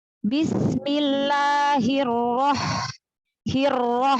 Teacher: ha sukunnya bisa dialirkan lagi